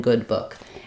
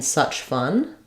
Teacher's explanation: the difference here between the o is that it's a higher vowel I'm using the lip rounding the uh my tongue is more flat it's slightly lower Jaws